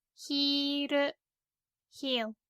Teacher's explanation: we don't have the L sound in Japanese, so when it's L in English, it becomes R